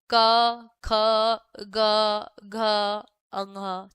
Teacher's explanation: जो क वर्ग का उच्चारण स्थान है उसका होता है कंठ से।